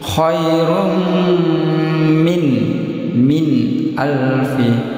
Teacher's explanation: nun sukun bertemu hamzah tenggorokan, nun dibaca jelas tanpa dengung pendek satu. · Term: izhar